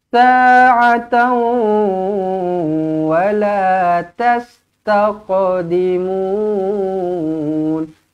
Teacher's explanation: Tanwin bertemu dengan waw, muncungkan bibir, dengungkan dua harakat, idgham ma'al gunnah.